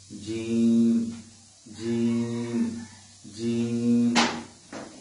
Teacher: আমাদের যে জিহ্বা রয়েছে, এই জিহ্বার মাঝখান উপরে তালুর সঙ্গে লেগে যাবে